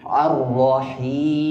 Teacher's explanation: tekanan ghunahnya ada di rongga hidung